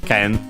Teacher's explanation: There is also another one, but the most common one, which is the strictly Japanese word for the same kanji, which is tsurugi, accented, yes, accented on the last syllable, while ken is accented, so accented on the ke